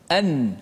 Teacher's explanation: Maka sebab itulah nun tu tidak memberi kesan pada nun. Nun tu dibaca dengan izhar, dimatikan dengan betul dengan menekan pada makhrajnya.